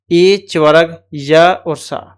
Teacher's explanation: अब इश नाम तालु होता है। इ च वर्ग य और स इनका उच्चारण हमारे तालु से होता है। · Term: तालव्य वर्ण